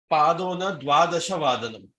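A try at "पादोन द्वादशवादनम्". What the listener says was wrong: Samyak.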